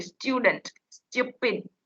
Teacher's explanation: જે real native speakers હોય ને તે સ ટ ય બોલે છે, સ્ટુડન્ટ સ્ટુપિડ એમ બોલતા હોય છે. ય ઉચ્ચારાતો હોય છે